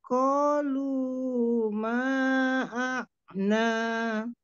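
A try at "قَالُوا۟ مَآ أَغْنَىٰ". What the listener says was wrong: Manya panjangkan lagi, ulang.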